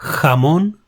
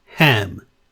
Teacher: it is similar to the English H but it is a bit stronger